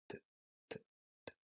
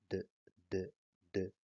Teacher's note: Se llaman así porque la punta de la lengua entra en contacto con el alvéolo y la cara posterior de los dientes incisos o las paletas al mismo tiempo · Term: dentoalveolares